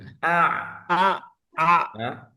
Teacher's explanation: dia ada di tengah ya di tengah tenggorokan salah satu daripada huruf halaq ya huruf tenggorokan